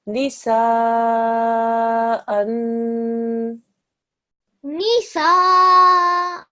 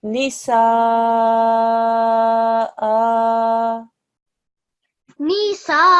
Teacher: When you do the ghunna sound, darling, read it as if it's a UN. There's a N sound